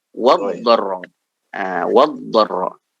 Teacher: Langsung dimasukkan ke huruf dad.